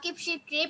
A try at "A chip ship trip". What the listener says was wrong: কিপ না কিপ হবে না তোমার হচ্ছে কিপ হয়ে যাচ্ছে আ চিপ শিপ ট্রিপ বলো আবার বলো আবার বলো আ চিপ শিপ ট্রিপ বলো